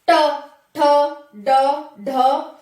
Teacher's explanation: अब ऊपर जाकर के पीछे वाले हिस्से से टच होगी मूर्धा से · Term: मूर्धा ग्रुप